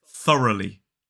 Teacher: that last syllable is Lee and it's a l and an e sound but it's a shorter variant of the same sound that appears in the word sheep